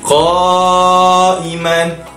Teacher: Sebab huruf mat bertemu dengan hamzah dalam satu kalimah. Kita akan membacakan cara bacaannya dengan kadar memanjangkan harakatnya 4 ataupun 5 harakat. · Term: mat wajib muttasil